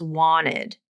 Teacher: he's dropping that T, that's the rules of this nasal flap, where you can drop a T from a word